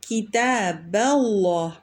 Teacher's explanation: کتاب اللہ میں با کو جب ہم اسم و جلالہ کے ساتھ ملائیں گے تو با کو ترقیق سے پڑھیں گے اور اسم و جلالہ کو تفخیم سے پڑھیں گے